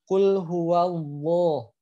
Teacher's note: lamnya tetap tebal ya lam itu dia tebal